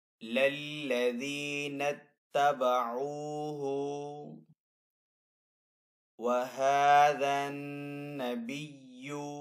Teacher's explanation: ہا کو تھوڑا سا کھینچ کر ادا کریں گے کیونکہ یہاں پہ کھڑا زبر ہے، نون مشدد ہے تو نون کے اوپر یہاں پہ غنہ کریں گے.